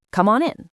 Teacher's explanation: The M sound links to on and the N sound links to in.